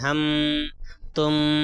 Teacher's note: ہم میں میم کی جو آواز ہے ناک میں نہیں جا رہی ہے، اور تم میں میم کی آواز ہے یہ ناک میں نہیں جا رہی ہے۔ · اس کو کیا ہے، ناک میں چھپا کر نہیں پڑھتے ہیں، کوئی نہیں پڑھتا ہم، تم، میم کی آواز کو ناک میں نہیں لے کر جائیں گے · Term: اظہار شفوی